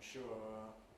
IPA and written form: ʃʊə (sure)